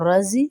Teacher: رضی را کے اوپر زبر ہے، اس کو موٹا کر کے پڑھیں گے